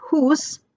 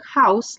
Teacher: house came from the Old English hus, with a long oo sound, and that vowel also shifted and became the diphthong house like we say now. The great vowel shift changed the entire sound system of English vowels, making modern pronunciation very different from Middle English.